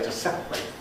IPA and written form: ˈsepreɪt (separate)